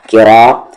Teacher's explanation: आगे काफ पर देर की रा के साथ अलिफ रा किरा, रा को हेवी करेंगे क्योंकि इसकी आवाज ऊपर जा रही है